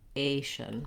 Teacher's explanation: we stretch on the second to last syllable and then the last syllable is short asian so my a is long and my shun is short